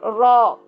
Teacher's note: را اس میں ظاہر راس اللسان زیادہ مضبوطی سے لگ رہی ہے، طرف اللسان کم لگ رہی ہے، کم مضبوطی سے لگ رہی ہے